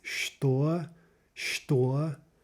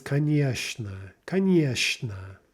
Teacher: the ch sounds more like a sh typically.